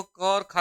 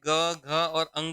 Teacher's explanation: क और ख का उच्चारण करें तो इसमें कंपन नहीं हो रहा है लेकिन जैसे ग घ और अंग का उच्चारण करें तो यहां पर हल्की झनझनाहट हो रही है